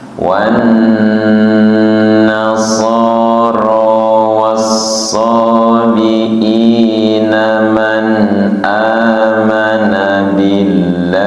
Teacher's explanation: ketika nun bertasydid tidak terburu-buru, ditekan dan ditahan, kemudian teliti panjang pendeknya.